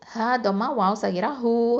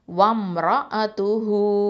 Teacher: அடுத்தது ரா ஃபதா ரா ஹெவி, ஹம்சா ஃபதா அ, வம் ரா அ, த தொம்மா து ஹ தொம்மா வாவ் சகிரா ஹூ 2 ஹரக்கத்தை நீட்டுறோம்